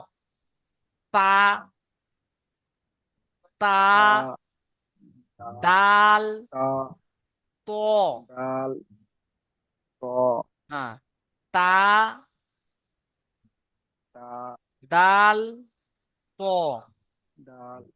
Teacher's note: জীবের আগা এবং সামনের উপরের দুই দাঁতের গড়ার সাথে লাগিয়ে উচ্চারিত হয় তা দালত